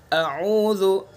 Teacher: हमज़ा को, आइन को अलग अलग अदा करना है। मखरज दोनों का एक है, लेकिन दोनों को अलग अलग अदा करना है।